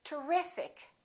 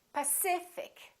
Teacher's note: the syllable before the IC gets stressed.